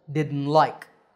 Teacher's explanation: Now you can say didn't with a t at the end, but when we speak in full sentences, we often leave out that t sound